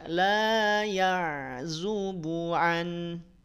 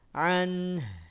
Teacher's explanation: Setelah jelas nunnya, baru alirkan haknya